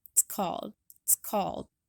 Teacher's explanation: The word it's is said so quickly that the vowel gets dropped completely with just a ts sound remaining, which gets attached to the following word.